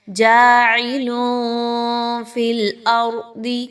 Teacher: جاعل فی الارض، را پر سکون کا نشان ہے اور اس سے پہلے حمزہ پر زبر ہے، را کو پر پڑھا جائے گا۔ ضاد موٹا حرف ہے، پر پڑھی جائے گی، موٹا کر کے اس لیٹر کو پڑھنا ہے